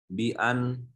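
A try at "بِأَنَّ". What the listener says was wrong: bi'anna tasdid. Kan anna wa akhwatuha, bukan an tapi anna.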